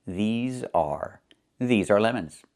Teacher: Make sure you make the long e sound like green beans. These plus the z sound like in zebra and zipper z with a voice.